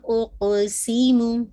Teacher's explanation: پھر آپ نے قاف پہ جو قلقلہ ہے وہ بہت واضح کرنا ہے